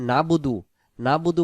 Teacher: না বুদু বললে এখানে আইন অক্ষরটা বাদ চলে যাবে।